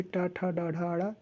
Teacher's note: तो जीभ जाके मूर्धा पे सटता है, दांत के ऊपर वाला हिस्सा ही मूर्धा होता है।